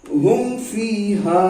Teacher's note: इजहार शफवी में मीम साकिन के बाद बा और मीम साकिन के बाद बा और मीम के अलावा, मतलब बा और मीम को छोड़ के, मीम साकिन के बाद बा और मीम के अलावा जितने भी हुर्फ हैं, खास तौर पर वाव या फा आए तो मीम को जाहिर करके बिला गुन्ना के पढ़ेंगे · मीम साकिन के बाद फा आया, तो यहां पर मीम को जाहिर करके जल्द पढ़ लेंगे